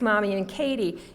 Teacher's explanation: n and K are made uh one in the front one in the back